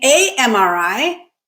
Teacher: saying a MRI, it's harder because you have to say a, pause, and then start speaking again with the M